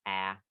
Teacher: ah is front and low